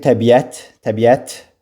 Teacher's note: vurğu sonuncu hecəyə düşür